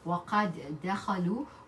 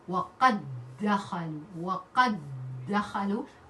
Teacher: we are going to merge the two together, and we read with shadda in the second one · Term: idgham